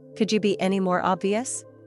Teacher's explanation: The emphasis was strong on the word be, and the sarcasm was all in the voice.